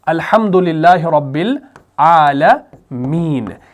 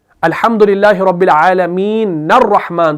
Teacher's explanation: زبر ہوتی ہے. لیکن جب ہم وقف کرتے ہیں عالمین پر تو اس نون کی زبر کو ہم کنورٹ کرتے ہیں سکون میں. حالانکہ ہم وہاں پر سکون لکھتے نہیں ہیں، وہ دال والا سمبل ڈالتے نہیں ہیں، وہ ہمارے ذہن میں ہوتا ہے کہ ہم اس کو کیا کرتے ہیں بھائی؟ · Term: عارضی سکون